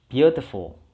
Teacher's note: Kita tekannya di suku kata pertama. Atau stressingnya di suku kata pertama.